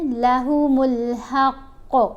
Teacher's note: ہیں، جب ہم ٹھہرے وقف کیا تو قوف کو ساکن پڑھا، جب قوف کو ساکن پڑھیں گے تو اس کے اوپر پھر کلکلا کریں گے